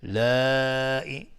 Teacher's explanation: مد واجب متصل به مقدار 4 تا 5 حرکت وجوباً مد میخواد